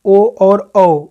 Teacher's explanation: ओ और औ उच्चारण स्थान जो है कंठोष्ठ है।